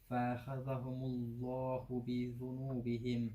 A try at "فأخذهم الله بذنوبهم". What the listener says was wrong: There's no mad there. فأخذ.